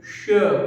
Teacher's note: तो स हमारा जो है तालव्य स है, बड़ा वाला स, जिसको कैसे बोलेंगे, जिह्वा को जब हम तालु से टच करा के बोलेंगे श, वो हमारा तालव्य स है, बड़ा सा होगा।